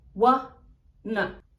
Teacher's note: Outro exemplo seria o want to, que fica wanna, wanna. De novo, dois sonzinhos de schwa